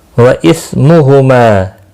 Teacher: اس سا کو ہلانا نہیں، ساکن کو ہلانا نہیں، ہلانا یعنی قلقلہ نہیں کرنا۔ ما مد منفصل ہے، تین الف کے برابر کھینچ کر پڑھیں گے۔